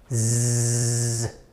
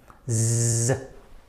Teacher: here we have our tongue almost touching the top of our mouth, so that as we blow out our air, it'll make a vibration, so buzzing sound